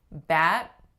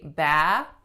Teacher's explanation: and stopping my airflow you're gonna hear a sudden nothingness versus when I say bath I'm slowly letting my a sound die out so acoustically it's subtle but again it's a really important distinction